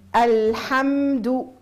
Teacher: اللام الساكنه الميم الساكنه عندهم جريان جزئي للصوت